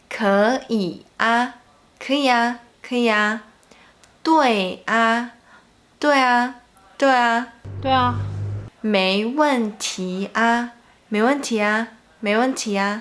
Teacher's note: when there is an “i” sound before 啊, then the 啊 usually sounds like “呀” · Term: sounds like ya